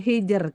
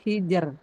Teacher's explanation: Kalau disukunkan sebelumnya sukun sebelumnya kasrah itu hijr langsung tipis